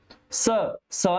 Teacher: गूंज निकल रही है। स में कोई कंपन हुई नहीं हुई, इसलिए इसको अघोष वर्ण माना जाएगा।